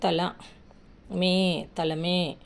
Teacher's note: మ కి ఎత్తున దీర్ఘము రెండు మాత్రల కాలంలో పలుకుతుంది